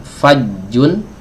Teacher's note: jim itu tempat keluarnya tengah lidah ditempelkan dengan langit-langit yang di atasnya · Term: huruf jim